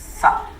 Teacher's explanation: Sifatnya adalah hamas karena ada desisnya, ya, ada desisnya. Atau juga sifatnya ismat.